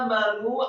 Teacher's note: Kata amanu, alifnya fathah dua harokat. Kemudian mimnya fathah satu harokat. Kemudian nunnya marfu' atau dhamma dua harokat karena setelahnya ada wawu sukun.